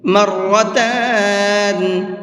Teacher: اس کے اندر را کو منہ بھر کے پڑھیں گے۔